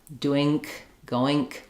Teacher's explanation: But when you try to use that as a non-native speaker, if your language doesn't have the same rules or the same sound, you're going to end up having an extra k or a g sound there. I'll hear a lot of people say doing, going, doink, goink.